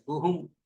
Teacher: ગુહુમ સાથે નાસિકાનો પ્રયોગ કરવો પડે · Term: અનુનાસિક